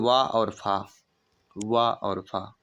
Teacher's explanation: उच्चारण दांत और होंठ से होता है